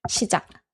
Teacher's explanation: Don't make any aspirated sound at the end. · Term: stopping sound